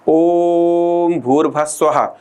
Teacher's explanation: तो ओम के उच्चारण में अन्य स्वरों की तुलना में अधिक समय लगता है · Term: प्लुत स्वर